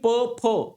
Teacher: खालच्या आणि वरच्या ओटांचा एकमेकांचा स्पर्श होतो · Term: ओष्ट वर्ण